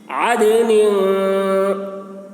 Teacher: دال میں قلقلہ ہوگا، یعنی دال کی آواز ڈبل نکلے گی ، اور نون میں اخفا ہوگا، یعنی نون کی آواز کو